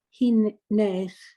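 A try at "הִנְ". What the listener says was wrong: No, hin, blend into the shva. No, you don't have to dwell on that nun. Hin. into a shva that closes the syllable.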